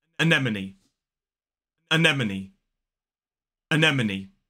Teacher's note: A lot of speakers seem to get lost around the n and the sound in this word, but this word is pronounced anemone. 4 syllables, the stress falls on the second, so it's a, schwa.